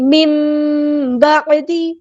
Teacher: نون کی آواز ہم یہاں پہ میم سے بدل دیں گے